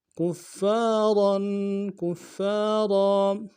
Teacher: کاف کو فا کے ساتھ ملانا ہے، فا کے اوپر تشدید زور دیں گے، اگلے فا کے ساتھ الف مدہ ہے